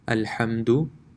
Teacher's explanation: The dal is not stretched at all, it's a quick, you can say a quick touch of the letter